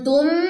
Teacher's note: میم ساکن کے بعد سواد، اظہار شفی، یہاں پہ کوئی غنہ نہیں ہوگا